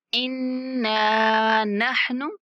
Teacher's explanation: इन्ना नून पर गुन्ना करते हुए थोड़ा खींच के पढ़ेंगे